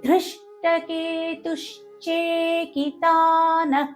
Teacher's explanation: కే అనేది దీర్ఘ అక్షరం కాబట్టి కే ని దీర్ఘంగానే పలకాలి. చేకితానః చే అనేది ఇది కూడా సంయుక్త అక్షరం కాబట్టి దాని ముందున్న తు అనే అక్షరం పైన అఘాతం పడుతుంది